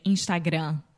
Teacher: with the final m in Portuguese we don't close our mouth